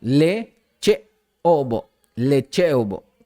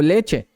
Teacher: hay que también acentuar mucho el sonido de la vocal glotalizada